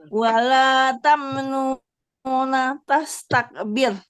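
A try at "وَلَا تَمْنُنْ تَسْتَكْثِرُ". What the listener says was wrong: Nung tak Bu, bukan nungna. Taksir setelah tamnung itu langsung ta. Tamnun tas. Tamnun tas. Bukan tamnuna Ibu. Bukan tamnuna. Tamnun. Taksir.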